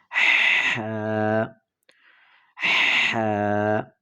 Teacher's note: گلے کے درمیانی حصے سے